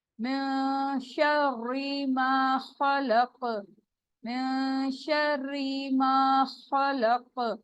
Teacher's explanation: نون ساکن کی آواز کیا ہو جائے گی؟ چھپ جائے گی، ناک میں ہم چھپا لیں گے